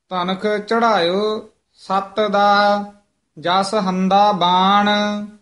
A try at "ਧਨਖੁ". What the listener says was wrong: ਧਨਖ, ਇਹ ਧਨਕ ਕੱਕਾ ਕਈ ਲਾ ਜਾਂਦੇ ਹਨ, ਖੱਖਾ ਉਚਾਰਨ ਕਰਨਾ ਹੈ।